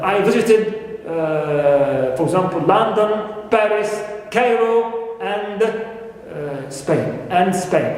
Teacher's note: we use rising intonation for the elements of the list, and in the last one, it falls. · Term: falling intonation